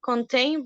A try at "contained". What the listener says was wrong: Okay, contained. Remember that we have ed at the end.